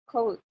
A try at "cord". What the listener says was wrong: Code biasa ini. O pendek. Jadi code ini bacanya? Cord. Lebih panjang dan lebih bundar.